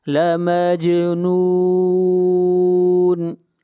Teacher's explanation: جیم کے اوپر قلقلہ کریں گے، جیم کو ہلا کر پڑھیں گے